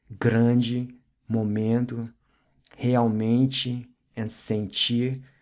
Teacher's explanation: has this ''n-g'' quality to it, like ''eng'' and ''ing'' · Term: nasal sound